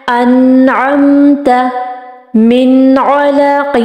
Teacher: مطلب ہم نے نون کو چھپانا نہیں ہے، بالکل واضح سامنے رکھنا ہے، شو کرنا ہے، ظاہر کرنا ہے کہ یہاں پر اظہار ہلکی ہو رہا ہے.